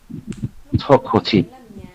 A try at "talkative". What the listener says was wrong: Yeah, so there's a V sound at the end there. Talkative.